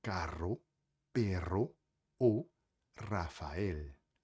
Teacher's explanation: no espanhol, o R é geralmente vibrante, como em carro, perro ou Rafael.